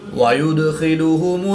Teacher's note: دال حروف قلقلہ میں سے ہے اور جب حروف قلقلہ ساکن ہو تو ان میں قلقلہ خوب ظاہر ہوگا، اس کو قلقلہ صغریٰ بھی کہتے ہیں۔ خا حروف مستعلیہ میں سے ہے جس کو پر یعنی موٹا پڑھیں گے